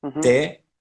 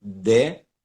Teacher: the only difference between T and D, like te, de, ti, di, it's the connection with the chords.